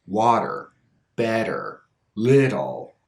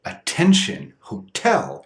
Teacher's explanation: The T is in an unstressed syllable, so the T becomes unstressed. It becomes the flap.